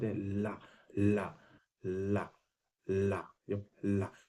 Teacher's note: ध्वनि अगल बगल से पहले निकालना इसलिए इसको हम लोग पार्श्व व्यंजन बोलते हैं · ला तो जब ला बोलते हैं ना तो ला में जब जो आपकी जीव है ना वो ऊपर पहले मुर्धा को टच करेगी ला अब उसके बाद हवा ध्वनि अगल बगल से निकलना शुरू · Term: पार्श्विक व्यंजन